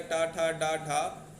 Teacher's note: उसके बाद मूर्धन्य, मूर्धन्य यानी कठोर तालु के अगले भाग से जो निकलता है, तालु का जो अगला भाग है उससे टकरा के निकलते हैं।